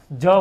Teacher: જ છે એ અલ્પપ્રાણ છે ઘોષ વ્યંજન છે